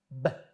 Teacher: O'qilishi o'zbek tilidagi B tovushiga juda yaqin portlovchi hisoblanadi. O'qiyotganda asosan lablarimiz muhim rol o'ynaydi. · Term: ba